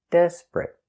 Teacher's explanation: the T at the end is a stop T. Desperate. Not desperate, but desperate.